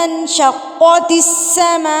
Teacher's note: مد کو ہم نے 4 حرکات کے برابر لمبا کرنا ہے